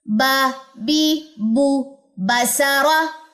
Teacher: اقصی لسان نہیں اٹھانی، اس میں استفال ہے